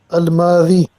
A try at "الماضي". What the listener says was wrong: أحسنت. الماضي.